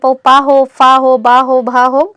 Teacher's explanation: जैसे आप पा को भी बोलेंगे तो दोनों होठ एक दूसरे को छू के ही जाएंगे, चाहे फिर पा हो, फा हो, बा हो, भा हो, तो इन सब में आप देखेंगे कि ये ओठ को छूते हैं, इसी वजह से इन्हें ओठ से कहते हैं।